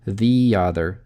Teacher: Два гласных звука на стыке мы добавляем срединный е.